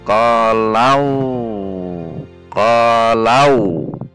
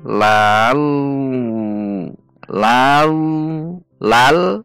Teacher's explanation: naikkan pangkal lidah yang menandakan bahwa itu tafhim atau tebal, yaitu dengan menaikkan pangkal lidah beserta sebagian sekeliling lidah sehingga mulut seperti tertutup